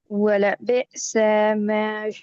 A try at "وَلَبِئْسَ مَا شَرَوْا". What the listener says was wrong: لمبا ہو رہا ہے بیٹی، وَلَبِئْسَ مَا شَرَوْا،